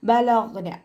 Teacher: ഗൈൻ പുറപ്പെടുന്നത് അദ്നൽ ഹൽഖിൽ നിന്നാണ്, നമ്മുടെ തൊണ്ടയുടെ ആദ്യ ഭാഗത്ത് നിന്ന്. ബലഗ്ന ഗൈനിൻ്റെ സൗണ്ടിനെ ഐനിൻ്റെതായി പോവാതെ നോക്കുക കേട്ടോ.